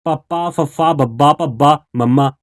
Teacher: ਇਹ ਉਚਾਰ ਕੇ ਦੇਖੋ ਤੁਹਾਡੇ ਦੋਵੇਂ ਬੁੱਲ ਆਪਸ ਦੇ ਵਿੱਚ ਮਿਲਣਗੇ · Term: ਦੋ ਹੋਂਟੀ ਵਿਅੰਜਨ